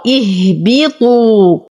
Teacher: حرف المد يسقط أيضا بسبب التقاء الساكنين، ولو ابتدأت بهمزة الوصل أبتدأ بها مكسورة